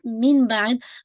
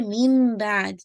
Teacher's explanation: नून साकिन और तनवीन की आवाज़ मीम में मर्ज हो जाती है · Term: इक़लाब